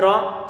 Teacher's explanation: Ra-nya difatahkan maka perlu untuk dibaca tebal